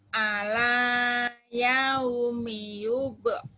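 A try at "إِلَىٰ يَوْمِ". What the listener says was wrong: ila, bukan ala, barisnya di bawah. Ila ila yaumi, lin yaumi, ila yaumi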